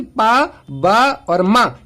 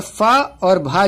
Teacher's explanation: बोलते टाइम अगर मैं कम हवा निकाल रहा हूं, ज्यादा जोर नहीं लगा रहा हूं, तो वो क्या कहलाते हैं, अल्प प्राण, और जब मैं ज्यादा जोर लगा रहा हूं वो क्या कहलाते हैं, महाप्राण। ठीक है, तो अल्प प्राण कौन से होते हैं, पहला, तीसरा और 5वां, यानी कि पा फा बा ये अल्प हो जाएंगे, और पहला, तीसरा और 5वां यानी कि पा बा और मा ये अल्प प्राण हो जाएंगे, और फा और भा जो होंगे ये महाप्राण हो जाएंगे।